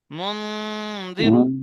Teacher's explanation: নুন সাকিনের পরে হরফে ইকফার 15টি অক্ষরের মধ্যে জাল এসছে। তাই নুন সাকিনকে, নুন সাকিনের আওয়াজকে নাকে তুলে একালি পরিমাণ গণনা করে পড়তে হবে। একে ইকফা হাকিকি বলে।